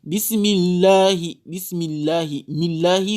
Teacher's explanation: quand c'est une kasara qui précède le mot Allah, la lettre lam sera lue avec tarqiq, sans tafkhim.